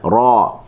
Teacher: huruf ra apabila berbagi atas kita baca dengan tebal, ra. Okey, kita guna hujung lidah dan kita ambil sedikit ruang di depan ni lah.